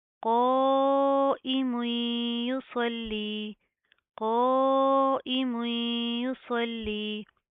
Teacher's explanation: اس کے بعد اس صوت کو اس لام کے ساتھ پلس کریں گے، صاد لام زبر صل، لام یا زر لی، یصلی، صوت کو پروپر منہ کو پر کر کے پڑھیں گے، موٹا پڑھیں گے، لام کے اوپر تشدید ہے، سختی سے مضبوطی سے جما کر پڑھیں گے